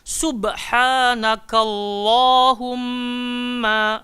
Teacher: dibaca tafkhim pada kalimah Allahumma